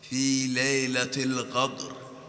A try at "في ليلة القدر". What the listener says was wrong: وين الراء يا أستاذ ما أسمح؟